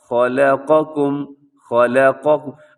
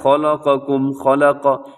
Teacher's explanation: خا موٹا لام باریک، قاف موٹا، باقی دونوں بھی باریک